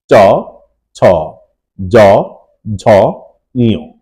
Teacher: এই পাঁচটি বর্ণ উচ্চারণ করতে গেলে আমাদের জীভের পাতা এবং তালুর অগ্রভাগের সাহায্য লাগে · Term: চ বর্গের